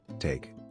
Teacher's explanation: t with aspiration as in take